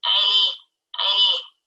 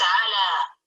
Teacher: this is something between fathah and kasrah